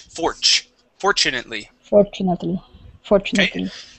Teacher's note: first up the word fortunately okay instead of saying for fortunately we want to replace the T with the CH